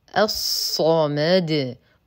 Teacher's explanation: اللام شمسيه لا تنطق وهمزه الوصل تسقط في درج الكلام الصمد اخلص ترقيق الميم من تفخيم الصاد ونقف على الدال بالسكون · شمسيه لا تنطق وهمزه الوصل تسقط في درج الكلام الصمد اخلص ترقيق الميم من تفخيم الصاد ونقف على الدال بالسكون فبالتالي تحتاج الى قلقله